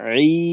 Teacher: ই, মুখ থেকে আওয়াজটা বের হলো, এখানে নাকের কোনো প্রভাব নেই।